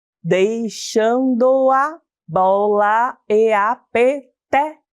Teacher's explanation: eu juntei as vogais em uma só sílaba. Além disso, vejam que a última sílaba do verso sumiu. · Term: sílabas poéticas